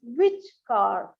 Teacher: which is given the Rising tone and car is given a falling tone